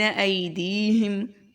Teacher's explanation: ای کو آدھے الف کے برابر لمبا کریں گے، دی کو ایک الف کے برابر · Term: یا لین